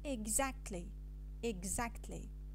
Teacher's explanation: we have omitted the T from the consonant cluster K, T, L, and this process is called consonant elision